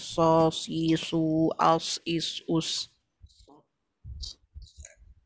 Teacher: hamas maknanya kita punya nafas terlepas bila masa sebut huruf tu, so ada angin yang keluar